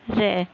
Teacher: फिर है र, र लुंठित, मुड़ना, लुंठित, र लुंठित, क्योंकि हमारी जिह्वा बेलन की तरह घूमती है, इसलिए इसे कहेंगे लुंठित